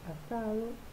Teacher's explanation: aparece el alófono fricativo del fonema D en posición intervocálica